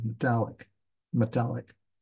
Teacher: it's like the E almost doesn't exist you're trying to hurry from the m to the T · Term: reduced vowels